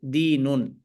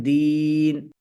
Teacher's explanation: আমরা শুনতে পাচ্ছি দ্বীন কিন্তু লেখা থাকবে হচ্ছে কিন্তু দিনুন অর্থাৎ মুনাওয়ান অবস্থায় লেখা থাকবে কিন্তু থামার কারণে দিন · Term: সুকুন